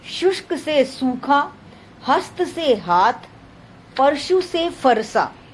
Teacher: महाप्राणीकरण, अल्प प्राण व्यंजन कभी कभी महाप्राण बन जाते हैं